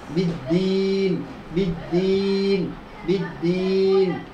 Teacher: বা দুই ঠোঁটের বেজা অংশ হইতে